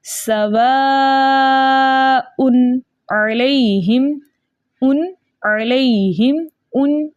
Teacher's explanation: हम तनवीन को इसके मखरज में, तनवीन के नून को इसके मखरज में खूब ज़ाहिर करके पढ़ेंगे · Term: इज़हार हल्की